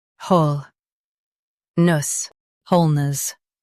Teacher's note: Stress whole and keep nus soft.